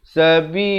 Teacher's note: Kalau waqaf, dia jadi mesti sekurang-kurangnya 2 harakat. Dan dibaca di sini lafz jalalahnya dengan nipis.